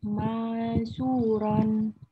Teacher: Ingat dengung ya. Nunnya sembunyikan ke huruf shin. Jadi bacanya bukan jelas. Ya, tapi disembunyikan ke huruf shin.